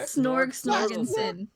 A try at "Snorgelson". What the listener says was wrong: It's with an L.